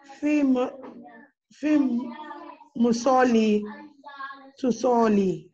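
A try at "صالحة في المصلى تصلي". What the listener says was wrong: This is not Ya, this is Ali Maksura. It is pronounced like Alif. Taliha Fim Musalla Tusali.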